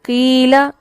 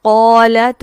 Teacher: ایسے میں حرف اتنا پر نہیں ہوتا جتنا وہ زبر کے ساتھ ہو رہا ہوتا ہے. تو قیلا، یہاں ہم قوف کو پر تو کریں گے لیکن یہ اتنا پر نہیں ہے جتنا قالت، جتنا اس میں پر ہے.